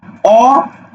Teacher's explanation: ঠোঁট দুইটা দূরে চলে যায়, এজন্য অ এর স্বাভাবিক রূপ হলো বিবৃত, আর অ সমান সমান যখন ও হয় তখন সেটা হলো কি, ঠোঁট দুটা কাছে থাকে, এই জন্য সেটা উচ্চারণ হলো সংবৃত।